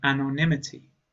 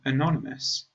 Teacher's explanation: the vowel at the beginning is the schwa sound and the emphasis or stress is on the second syllable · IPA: /əˈnɒn.ɪ.məs/